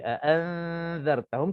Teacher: cara bacaannya dengung 2 harakat, dan cara dengungnya pula bila kita dah dengung, sementara nak habiskan 2 harakat, kita dah standby untuk nak sebutkan huruf zal